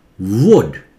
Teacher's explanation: उड नहीं, वुड, व से शुरू कीजिए